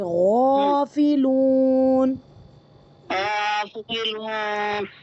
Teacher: غین کے لیے تھوڑا سا آپ اس کی آواز کو موٹا کریے